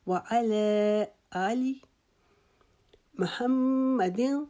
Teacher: آ کو لمبا کریں گے ایک الف کے جتنا، لی کو نہیں کھینچیں گے